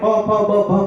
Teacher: તમારે પ ફ બ ભ મ બોલવો હોય તો હોઠ ખોલવા કરવા જ પડે